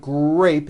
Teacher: notice in the word grape the r sound is stronger and you even hear it more than the G sound